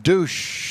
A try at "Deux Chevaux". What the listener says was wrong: Not douche. It's Deux Chevaux.